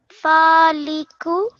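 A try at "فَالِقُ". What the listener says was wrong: Faliqu. Okay, this qaf over here, this is a bit different than the plain kaf that we've probably seen before, but this one you have to try a bit more harder from deep inside your throat.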